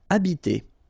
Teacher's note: in French, the H, like that here, is not pronounced at all. Okay, so you don't pronounce it, so you get the first sound is the vowel A here.